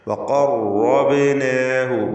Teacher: ബാഇന് ഖൽഖല സൂറ നൽകി ശബ്ദം ഹറക്കത്ത് പോലെ ചലിപ്പിക്കുക.